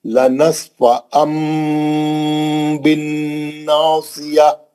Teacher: اب نصف ان نہیں پڑھیں گے، لنصف ان کے بجائے لنصف ام میم پڑھیں گے. میم پڑھیں گے، نہ صرف میم پڑھیں گے بلکہ میم کا غنہ بھی کریں گے